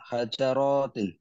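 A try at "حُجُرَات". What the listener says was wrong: hujurat hujratun asa kamar bukan hajar tapi hujrah hujuratin.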